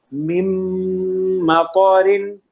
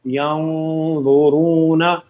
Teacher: ناک میں ہم آواز تو لے کے جا رہے ہیں لیکن غنے کی طرح کمپلیٹ, یعنی ادغام کی طرح کمپلیٹلی ناک میں آواز نہیں جاتی. مم مطارن مم مطارن نہیں, ینظرون انعمتا مم مطرن ینظرون. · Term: اخفا